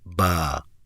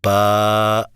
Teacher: بس 2 الف آپ نے لمبا کر دیا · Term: مد